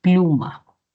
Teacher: Pluma, sílaba tónica, la otra sílaba átona. Me preguntan por el acento la mayor fuerza de voz. Digo que es plu de pluma